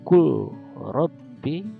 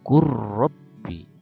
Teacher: lam sukun bertemu dengan ro, maka seolah-olah lam itu tidak ada, langsung ke ro yang seperti ditasdidkan